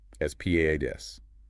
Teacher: Asparagus just needs careful vowel management. The stress is squarely on the second syllable